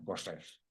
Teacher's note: Correr lo pronuncian en las dos posiciones con una R fricativa sibilada. · Pero apenas fui llegando en tren a las estaciones de la sierra, apenas oí 2 palabras de español en boca de los indios cuando me impresionó la R. Correr lo pronuncian en las 2 posiciones con una R fricativa sibilada